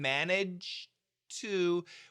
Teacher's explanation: we have a nice clean finish, and then we start off with a fresh T